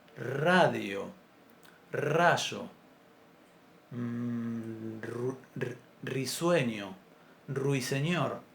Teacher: en castellano nunca la pronunciamos como vibrante simple a inicio de palabra